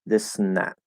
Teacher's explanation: i can go from the s straight to the n with nothing between it